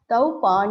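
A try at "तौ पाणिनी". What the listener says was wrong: Paninihi. You have to sing. Don't drop the visarga.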